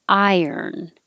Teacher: high when you say the i i vowel iron and then when you slide your tongue down from the high position to a lower position to curl it back for the r you'll hear a little y sound accidentally so even if you think of it as iron money you